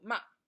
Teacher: the fourth tone is short and down